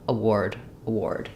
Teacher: So we have two letter A sounds, but we're not saying any A or A or R sounds in award. The first letter A is a schwa sound. It's unstressed, and so it's going to sound like It's going to be very short. · rather than AR saying R or air in this word, it actually says the OR sound